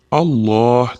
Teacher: Alloh lafzi doimo o'rtasidagi tashdidli lam 1-2 deguncha miqdorda cho'zib aytiladi. Alloh demasdan Alloh deb aytiladi.